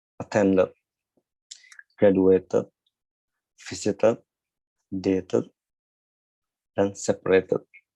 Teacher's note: Untuk aturan yang terakhir atau aturan yang ketiga, yaitu ketika kata kerjanya diakhiri oleh huruf sudah diakhiri oleh huruf T dan D, itu kita cara baca ed di akhirnya itu seperti id, it, atau ut